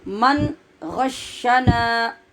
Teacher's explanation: نون کے آگے الف ہے تو ہم یہ سیکھ چکے ہیں کہ جب الف آگے ہو تو اس کو لمبا کرتے ہیں